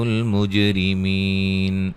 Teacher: جیم پہ قلقلہ ہے، را کو باریک پڑھیں گے